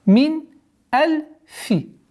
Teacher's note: Здесь у нас правило изгар, ясное чтение. Когда нун сукун с одним из 6 гортанных звуков встречается, четкое и ясное произношение звука нун.